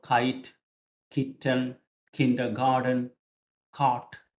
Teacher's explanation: Because മലയാളത്തിൽ ക ഫ്രണ്ടിൽ നിന്നാണ് പറയുന്നതെങ്കിൽ ഇംഗ്ലീഷിലെ ക ബാക്കിൽ നിന്നാണ് പറയുന്നത്.